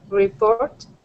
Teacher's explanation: with the stress at the end of the word